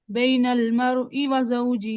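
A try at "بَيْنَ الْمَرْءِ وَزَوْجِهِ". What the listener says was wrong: نہ مر پہ اسٹیج تو کرو نا، ایسے فوراً فوراً پڑھ دو گے تو سکتا تو نہیں ہوگا، سکتا ایک الف کے برابر ہوتا ہے۔ بین المرء وزوجه،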